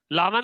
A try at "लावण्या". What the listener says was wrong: लावण्य नहीं, वो लावण्या है।